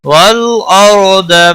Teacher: والارض لام ساکن کو ہلانا نہیں، را ساکن سے پہلے زبر ہے، اس لیے را ساکن موٹا پڑا جائے گا